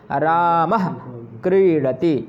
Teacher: तो यहाँ पर जो विसर्ग से पहले आपका का आ रहा है, तो यही विसर्ग से पहले जो का आ जाता है या खा आ जाता है तो वह जिह्वामूलीय हो जाता है, रामः। अब रामः कहने पर आपकी जीभ, ओंठ बंद तो नहीं होंगे पर आपकी जीभ पीछे की ओर जाती है